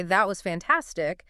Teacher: with a high falling pitch, I'm expressing genuine enthusiasm.